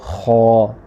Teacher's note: इसका जो मखरज है, निकलने की जगह जो आर्टिकुलेटर है इसका, वो है गले का पहला हिस्सा और ज़ुबान की जड़ इसमें उठानी है, क्योंकि ये जो खौ है ये हुरूफ़ मुस्तालिया में शामिल है। · ज़ुबान की जड़ उठा के पढ़ेंगे इसको खौ